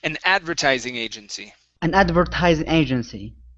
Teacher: so our stress is at the very beginning